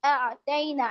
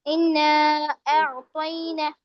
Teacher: اعطینا اس طریقے سے پڑھ رہی ہیں. جھٹکا نہیں دینا ہے. عین کو نکالنا ہے.